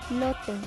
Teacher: La L suena L, lateral, alveolar, sonora.